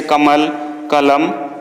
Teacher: हिंदी में शब्द के अंत का अ उच्चारण नहीं होता, हलंत उच्चारण होता है